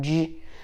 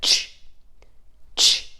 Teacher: J you feel like this little vibration in the back of your throat J whereas CH is just that one pop of air